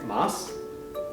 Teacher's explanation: sometimes the sounds u and e in japanese words are not pronounced very strongly this is particularly common at the end of words and after unvoiced consonants like s